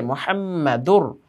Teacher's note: মিমের মধ্যে তাসদীদ হওয়ার কারণে ওয়াজিব গুন্না হয়েছে